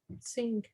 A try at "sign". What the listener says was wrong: Actually, it does look like that, but it's sign. You don't say that G. It's a sign, right?